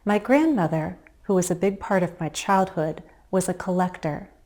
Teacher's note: my voice tends to drop to a slightly lower pitch and possibly even to a lower volume when I give additional information · First, I pause. I frame the additional information with short breaks.